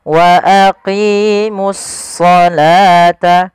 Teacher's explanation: alif lam syamsiyah yaitu suaranya kita langsung ke huruf shadnya